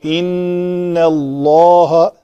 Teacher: نون کو نہیں میں نے پر کیا، وہ پتلا ہی رکھا ہے. ان اللہ لام کو پر کیا